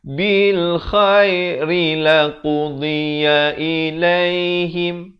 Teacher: Jadi hati-hati di sini mula daripada ri ini, ri dibaca nipis satu harakat.